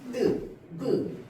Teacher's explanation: 성대의 근육에 긴장을 줍니다. 성대의 근육에 긴장을 주어서요, 소리를 단단한 소리처럼 느껴지게 합니다. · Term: 된 소리